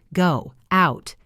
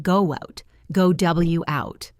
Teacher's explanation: If you say them separately, go, out, it is choppy. A native speaker adds a W sound. It sounds like go out, go W out.